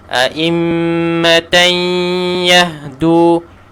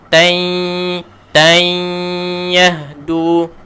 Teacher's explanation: masuk idgham dan juga gunnahkan, dengungkan, masuk dan dengung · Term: idgham ma'al gunnah